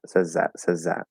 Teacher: i'm dropping the th there